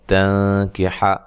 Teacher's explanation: حتی، کھڑی زبر کھڑی زیر الٹا پیش کو مد اصلی بھی کہا جاتا ہے، یہ مد اصلی ہے۔ تنکح، نون ساکن کا یہاں اخفا مع الغنہ ہے